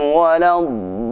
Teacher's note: Cara membaca huruf dad itu sisi lidah menempel pada gigi geraham dengan ada penekanan karena bertasydid.